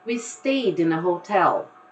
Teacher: you actually have the D from stayed getting together straight away with the word in